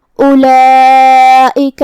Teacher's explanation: مد واجب متصل میں ہم اپنی آواز 4 مد کے برابر لمبی کریں گے · ہمیں حمزہ کو حلق کے نیچے والے حصے سے ادا کرنا ہے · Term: حمزہ قطع